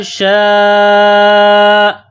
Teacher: یہ لمبی مد ہے، 4 الف کی لمٹ میں کھینچنا ہے